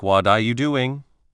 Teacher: Sometimes words can even borrow sounds from each other in what are you doing? The T at the end of what can become a soft D sound and R can be made shorter. So what are you doing might sound like what are you doing? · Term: connected speech